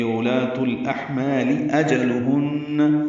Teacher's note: حمزہ جیم جلدی ادا کریں گے، لام باریک ہے، ہن میں غنہ ہے